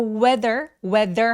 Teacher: 혀를 살짝 내밀어 주시고요. 울림이 있어요.